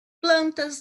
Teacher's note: Sai pouco do ar pelas vias nasais e um pouco pelo ar pela garganta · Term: som nasal